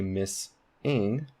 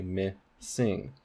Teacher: you can hear this s in the onset of the second syllable